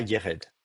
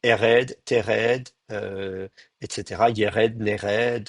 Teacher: Ce qu'il faut retenir, c'est surtout cette contraction de la diphtongue, aïe en e.